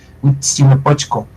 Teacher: Igual Huitzilopochtli o Huitzilopochtli Vemos aquí esta esta consonante anidada, nada más es TS, digamos que se alarga la consonante TS